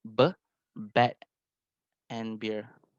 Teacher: You will feel the vibration that comes out from your voice, which is at vocal cord and at the throat. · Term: voice consonant